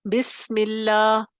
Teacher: بسم اللہ، سین میں آواز آپ کو سنائی دے رہی ہے، سین میں آواز جو ہے وہ بند نہیں ہوئی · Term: رخوت